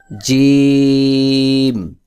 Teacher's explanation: জিম বলতে হবে জিহ্বার মধ্যখান তার বরাবর উপরের তালুর সঙ্গে লাগাইয়া একটু চাপ দিয়ে উচ্চারণ করতে হবে।